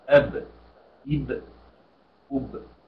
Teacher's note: ما أقولش أبا أقول أب وليس أبا ما افتحش الباء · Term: السكون